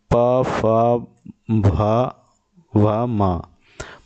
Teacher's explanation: ओष्ठ यानी कि ओंठों से बोले जा रहे हैं, इसीलिए जो है ओष्ठ व्यंजन है।